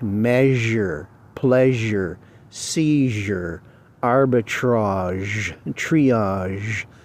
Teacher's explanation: you hum at the same time that you're saying sh and you get Z